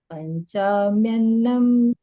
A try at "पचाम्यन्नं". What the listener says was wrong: पंचा कहाँ है? पचाम्य।